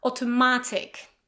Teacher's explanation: Stress on ma.